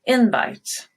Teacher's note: So invite starts high on in and drop.